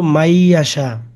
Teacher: এই নুনটা থাকবে না, সরাসরি এই মিম ইয়াকে ধরবে। মাইয়া। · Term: ঈদগাম